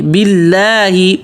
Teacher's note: اللہ کا نام پتلا بولیں گے اس لیے کہ اللہ کے نام سے پہلے زیر آ رہی ہے